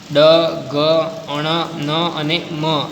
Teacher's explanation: મુખનો માર્ગ અવરોધને કારણે બંધ થઈ જતાં હવાનું મોજું નાક દ્વારા પ્રસાર થાય ત્યારે અનુનાસિક ધ્વનિ સંભળાય